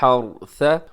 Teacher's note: لیفسد فیہا ویہلک الحرث والنسل، اب یہاں پر حا کا خیال رکھیے گا، را موٹا ہوگا